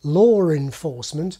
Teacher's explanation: So-called intrusive r only occurs directly before a vowel, law/r/enforcement being pronounced the same as lore enforcement.